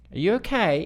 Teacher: you got that rising at the end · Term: rising tone